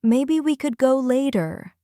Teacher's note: Try saying, "Maybe we could go later." See how your voice gently rises at the end?